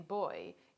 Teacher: in boy is made just as the pit is except that the vocal folds are close together and therefore vibrate when the air passes between them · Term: voiced bilabial stop